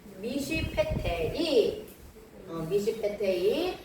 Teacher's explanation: 그래서 그냥 쉬 소리가 나는 건데 이게 두 개가 연속으로 온단 말이에요. 연속으로 올 때는 앞에 쉐바는 무성, 뒤에 쉐바는 유성.